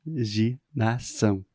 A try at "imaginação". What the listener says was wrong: Você tá falando ginação. Você tá sorrindo. E não é. Olha só minha boca. I, normal, abertinha. Ma, eu junto os meus lábios na hora de falar ma.